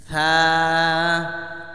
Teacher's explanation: জিহ্বার আগা সামনের উপরে 2 দাঁতের আগার সঙ্গে লাগে।